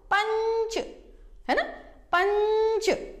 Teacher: ठीक है, अब पंच बोलने के समय सोचो कहां से आवाज आ रही है, बोलकर देखो, पंच है ना, पंच। इसमें नाक से थोड़ी ज्यादा हवा निकलती है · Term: अनुस्वार